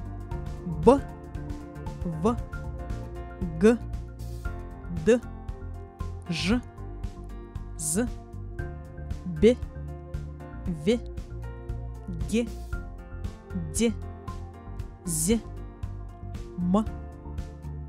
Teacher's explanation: Согласные звуки, в образовании которых участвуют и голос, и шум, называют звонкими. Голосовые связки при их произнесении напряжены и дрожат.